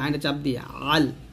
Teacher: আইন উচ্চারণ করতে গিয়ে যেন হামজা না হয়ে যায়